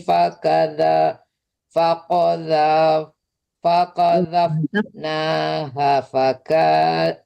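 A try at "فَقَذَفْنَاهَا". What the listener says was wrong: Hanya panjang. Faqadzafnaha.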